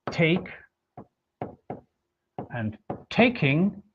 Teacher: the stress always remains the same. So it's in both cases on the first syllable.